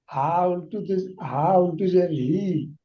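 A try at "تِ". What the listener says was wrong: হা নয় তা, তা দোজের তিন।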